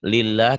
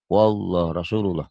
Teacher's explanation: Jadi yang menyebabkan lafaz Allah ini tipis tebal sebelumnya. Kalau sebelumnya baris di bawah tipis. Kalau sebelumnya baris atas tebal.